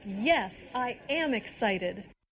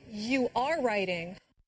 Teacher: Did you hear the stress on the verb be when said am and are?